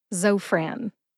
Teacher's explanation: put both syllables together and you get Zofran emphasize zo · Emphasize Zo. See if you can hear the emphasis when I say it again.